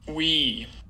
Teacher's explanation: going from back articulation to a front, F2 is going to go up. And we're also unrounding lips to get to, starting with a rounded lip articulation, going to an unrounded lip articulation.